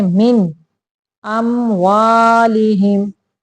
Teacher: यहाँ पे देखें, मिन, नून साकिन आ गया, उसके बाद हमजा आ गया है, यानी हुरूफ हल्की में से हमजा आ गया है। तो हम यहाँ पे नून को सिर्फ जाहिर करेंगे, गुना नहीं करेंगे। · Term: इजहार